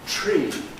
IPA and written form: tɹ̝̊iː (tree)